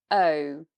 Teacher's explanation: It's a diphthong, moves through two shapes. O, again, so we start more open and we come more closed.